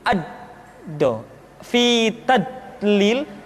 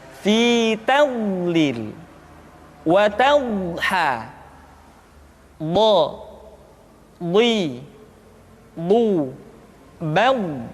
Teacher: Di antara sifat yang menonjol pada pengucapan huruf dha adalah sifat al-istitalah, yaitu suara kita memanjang dan terdengar lembut suaranya ketika diucapkan. Tidak diucapkan seperti ini, ad-do, fi tadlil, tapi diucapkan dengan suara yang lembut, memanjang suara kita.